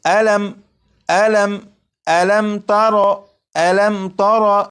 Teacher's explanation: जब मीम साकिन के बाद ता है तो इस मीम साकिन में गुन्ना नहीं करेंगे